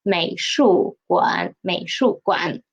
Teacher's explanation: please pay attention to 馆. Read it as a half third tone.